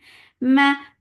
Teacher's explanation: Ma for fatha open jaws, the sound is short with fatha.